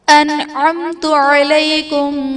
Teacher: میم ساکن کے بعد انعمت میں میم ساکن کے بعد حرف با اور میم کے علاوہ تا ہے تو یہاں پر اظہار شفوی کا قاعدہ ہوگا، یعنی میم ساکن میں ہم غنہ نہیں کریں گے۔